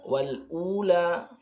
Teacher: Nakal al-akhirati hanya dibaca seukuran satu alif. Wal ula, u dibaca seukuran satu alif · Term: syibhul badal